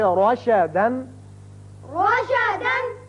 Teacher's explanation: جب بھی را کے اوپر زبر آ جائے تو اس کو ہم پر پڑھیں گے، منہ بھر کے پڑھیں گے